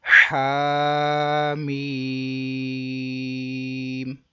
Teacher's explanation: ادھر بھی سیم ویسا، الف مدہ پھر مد لازم. پہلے کو ایک الف، ہا کو ایک الف، میم کو تین.